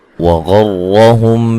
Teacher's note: غین کو موٹا ادا کریں گے، را کو بھی ساتھ موٹا ادا کریں گے